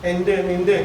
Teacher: ഈ ടാ പറയുമ്പോൾ നമ്മുടെ നാവിൻ്റെ അറ്റം സ്പർശിക്കുന്ന മോണയിലാണ്.